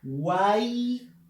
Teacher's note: la a es la vocal abierta además está en el medio y lleva la fuerza de voz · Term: triptongo